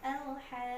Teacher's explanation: Tahan dulu 6 ketukan baru masuk ke huruf qaf di hitungan ke-7. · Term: tanda bendera